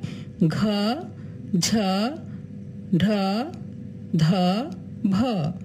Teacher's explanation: ঘোষ মহাপ্রাণ ধ্বনি হচ্ছে ঘ, ঝ, ঢ, ধ, ভ।